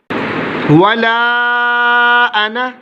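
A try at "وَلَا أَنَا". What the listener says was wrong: ये ज़ाइद अलिफ है, हम इसको अना नहीं कहेंगे।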